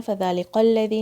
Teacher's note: فذلک الذی، لام کے نیچے کسرہ ہے، کاف لام سے جوائن ہوگا، کاف کو لائٹ رکھنا ہے. فذلک الذی نہیں بولنا ہے، فذلک الذی، الذی ذال اسی طرح سے زبان کی نوک سے، اور پھر 2 کاؤنٹس یہاں پہ.